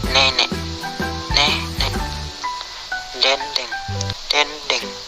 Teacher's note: Vokal E. Kriteria: vokal depan, sedang bawah, tak bundar, semi terbuka. Contoh kata: nenek, nenek, dendeng, dendeng.